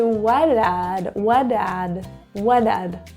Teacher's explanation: Now the T is pronounced as a flap T. That kind of sounds like a D because there are two vowels, a vowel in front and a vowel behind.